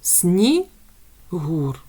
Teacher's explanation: нас має по два склади але давайте визначимо який склад наголошений снігур наголошений другий склад